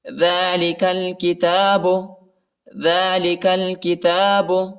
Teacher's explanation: کاف کو لام کے ساتھ ملائیں گے، الف نہیں پڑھا جاتا، الف کے اوپر حرکت نہیں ہے۔